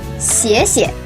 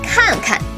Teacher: the pronunciation of the first verb is in its original tone. The second verb after it should be pronounced in a neutral tone